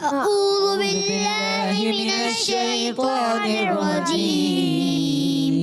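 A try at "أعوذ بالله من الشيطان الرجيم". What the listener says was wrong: اچھا آپ نے اعوذ، عین کی آواز نہیں آئی. اعوذ، حمزہ اور عین الگ کرنا ہے. اعوذ باللہ من الشیطان الرجیم.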